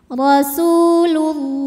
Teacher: karena alif lam menghadapi huruf Syamsiah yaitu lam maka cara bacanya alif lam dilewat tidak kita baca atau biasa disebut dengan Idgham Syamsi